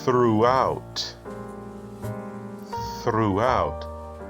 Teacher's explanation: the th is unvoiced and then you hear the r